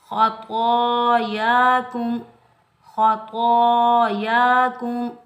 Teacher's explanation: त्वा और या इन दोनों के ऊपर खड़ी हरकत में से खड़ा ज़बर आ रहा है, तो इन दोनों को एक एक अलिफ की मिकदार में खींच कर अदा करेंगे। · ख़ा और त्वा ये दोनों हरूफ मुस्ताइला में से आ रहे हैं, तो इनको मोटा पढ़ेंगे। ख़ा के ऊपर ज़बर बगैर खींचे पढ़ेंगे। · काफ को मीम साकिन के साथ मिलाएंगे, बगैर खींचे पढ़ेंगे। मीम का इजहार होगा मिलाने की सूरत में।